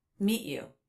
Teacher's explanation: too also again like when he made a stop T here he did not release the T sound